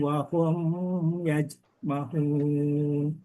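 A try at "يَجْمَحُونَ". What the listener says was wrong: Ma'u, ainnya ketinggalan. Mahun, hunnya ya.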